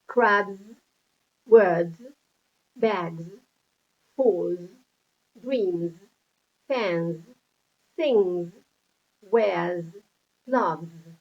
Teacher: like the b, d, g, sounds that we have on these examples, the S is pronounced Z